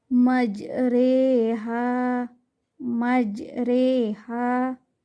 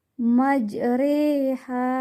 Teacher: huruf ra pada kata majraha tidak dibaca ra tetapi Re · Di cara membacanya memiringkan bunyi fathah ke arah kasrah. Bunyi imalah sama dengan bunyi huruf E pada kata hei.